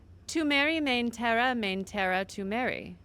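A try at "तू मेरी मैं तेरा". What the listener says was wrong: Yeah, just remove the N from me. Me. just and even I would pronounce it in a different manner. It's tu meri main tera tu meri main tera tu meri tu meri main tera tu meri.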